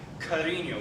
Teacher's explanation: The next symbol, this is one of the oddest things to an English speaker, is the ñ, which in a word like cariño, which means love, you have that ya added to your normal n